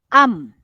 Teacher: keluarnya bunyi huruf mim mim jadi kalau kita sebut am jadi bibir atas dan bibir bawah bekerjasama dia tertutup